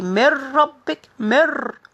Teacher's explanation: So merging the noon into the ra.